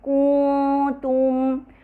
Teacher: ہم غنہ طویل کرنے کے بجائے ہم اس کو جو حرکت ہے اسے طویل کر دیتے ہیں جس سے واو کا اضافہ محسوس ہوتا ہے، جو کہ غلط ہے.